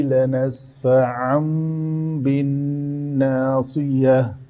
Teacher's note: تنوین کے بعد حرف با آ گیا ہے، تو اس تنوین کو میم سے بدل کر پڑھا جائے گا۔